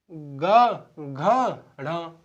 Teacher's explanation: वे व्यंजन जिनका उच्चारण करने पर जिनमें कंपन उत्पन्न होती है, उन्हें संघोष कहते हैं।